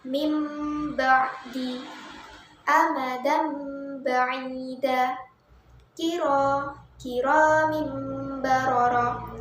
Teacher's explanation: saja hurufnya ialah bak maka cara membacanya itu adalah menukarkan jadi menyuarakan nun mati atau tanwin ini dengan suara memimpin dengan merapatkan kedua bibir dan disertai dengan dengung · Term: iqlab